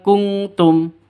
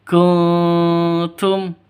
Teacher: jadi bacanya bukan kungtum ya, bukan kungtum, tapi kuntum, samar.